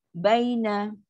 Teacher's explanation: Dan bila nak sebut huruf lin, kita punya suara tu turun ke bawah. Bila suara turun bawah, dia akan jadi lembut.